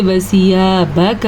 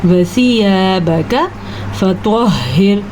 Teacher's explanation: نہ تو ہم با کو لمبا کر سکتے ہیں نہ ہم کاف کو لمبا کر سکتے ہیں